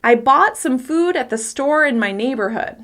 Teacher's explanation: If I only emphasize the key words of the sentence - bought, food, store, neighborhood - you can still understand the meaning. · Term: sentence stress